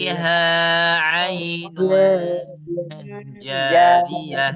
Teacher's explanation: Rnya tidak ada bertasydid ya. Jadi jangan jarriah tapi janya panjang.